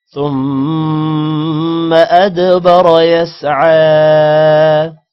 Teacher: ثم غنہ ہوگا ادبر دال پر قلقلہ ہوگا را کو موٹا کریں گے